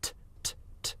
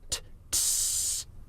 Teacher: holding the t-shape stretched becomes s